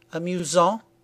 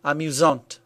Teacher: the masculine version is pronounced amusant with a silent T, and the feminine version is pronounced amusante with a T pronounced clearly